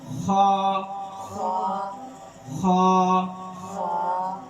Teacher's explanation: حلق کا سب سے اوپر والا حصہ. جو زبان کی جڑ کے ساتھ نیچے ہے